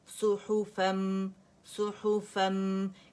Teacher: کیونکہ نون ہمارے پاس فتحتین کی تنوین ہے, 2 زبر کی تنوین ہے, تو فن کا جو نون ہے وہ میم کے اندر جا کے مکمل طور پر اپنی تمام تر صفات کے ساتھ مرج ہو گیا, ٹھیک ہے. تو ہمارے پاس ادغام تام بالغنہ آ گیا, ٹھیک ہے, یعنی کمپلیٹ مرجنگ ود غنہ, اکمل ما تکون گریڈ کا غنہ کریں گے.